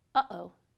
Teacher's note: This stops the air flowing through your vocal tract. That little silence in the middle of uh-oh is called a glottal stop